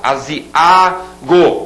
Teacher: esse A sozinho é a sílaba tônica